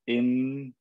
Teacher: when you pause on the last letter you feel your tongue touch the top of your mouth that's heavy that's real but if i don't let my tongue